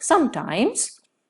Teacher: you use the word sometimes along with the fall rise tone